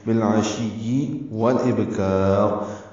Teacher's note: بالعشی، با غلام سے ملائیں گے، لام ساکن پہ اظہار ہے، عین وسط حلق سے نکالیں گے، شین کو یا سے ملائیں گے.